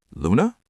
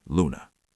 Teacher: saying their name with a slightly higher pitch at the end, almost like a question, lands way better than saying it flat.